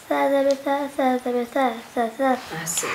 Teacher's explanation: اس کو آپ زبان کی نوک سامنے دانتوں کے کنارے سے لگا کے نرمی سے پڑھیں گے، بہت سافٹ